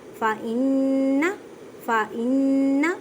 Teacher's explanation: نون مشدد ہے تو گنہ کریں. گنے کا مطلب ہے آواز کو ناک میں لے کے جانا ایک الف کی مقدار میں.